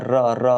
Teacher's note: बंद होता है और दो तीन बार खुलता है जैसे र जैसे र बोलेंगे तो जीव जाके वही वाइब्रेट होगा हल्का सा दो तीन बार वहां पे खुलेगा जैसे लिखा हुआ है इसमें इसमें मुख्य द्वार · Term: लुंठित